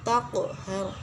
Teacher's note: huruf qalqalah, qaf bersukun maka dibaca memantul. Taqhar, yaitu terdapat hukum bacaan ra tafkhim.